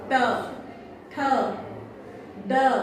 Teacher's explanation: आपकी जीभा फोल्ड होकर ऊपर के पार्ट को टच करती है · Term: मूर्धा